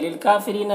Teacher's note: काफ में खड़ा ज़बर है, एक अलिफ के बराबर खींचेंगे।